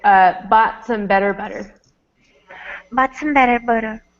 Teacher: this T at the end of the word bought, I don't say it. I just say bought.